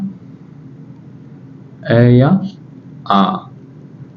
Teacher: आ का उच्चारण स्थान होता है अपने इधर से लेंगे सबसे पहले कंठ